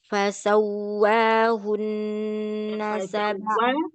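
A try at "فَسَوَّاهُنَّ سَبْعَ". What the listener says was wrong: Berarti fasawwa yang ditekan tasydidnya, bukan harokatnya. Perhatikan fasawwahun, bukan fasawwahun.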